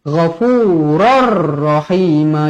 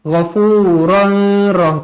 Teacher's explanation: Tanwin tidak selari bertemu dengan huruf ra, hukum dia idgham bila gunnah. Bila gunnah, memasukkan tanpa dengung. Jadi bacaannya ghafurur rahima.